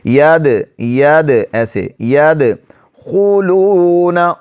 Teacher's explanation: یدخلون، دال پر قلقلہ کریں گے، یدخلون ایسے نہیں پڑھیں گے، اگر ایسے پڑھیں گے تو دال صحیح طور پر نہیں پڑھا جائے گا، دال پر قلقلہ کریں گے، آواز کو تھوڑی سی جنبش دیں گے، ہلائیں گے